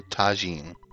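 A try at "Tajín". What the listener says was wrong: I believe it's tahine. You know, like the J is pronounced yah or ha in Spanish.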